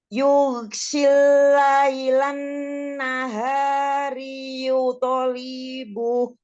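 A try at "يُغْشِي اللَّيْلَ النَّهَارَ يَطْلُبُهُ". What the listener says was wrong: Harokatnya agak pindah-pindah nih. Laili, naharo. Yatlubu. Sekaligus ini huruf ghainnya agak terlalu tegas. Jangan kayak G. Ini ghainnya lebih lembut lagi, coba.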